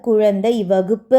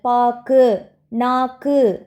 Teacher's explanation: சொல்லின் இறுதியில் வரும்போது ஒரு மாத்திரைக்கு பதிலாக அரை மாத்திரை அளவே ஒலிக்கிறது